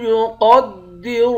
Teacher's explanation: قاف اور را ان دونوں حروف کو موٹا پڑھیں گے